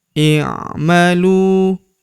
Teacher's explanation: huruf lu kita panjangkan dua harakat. Karena terdapat wau sukun di depannya.